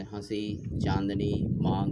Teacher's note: इसके बाद है अनुनासिक, इसका चिन्ह शिरोरेखा के ऊपर चंद्र बिंदु के रूप में किया जाता है। इसका उच्चारण करते समय हवा नाक और मुख से समान दबाव के साथ बाहर निकलती है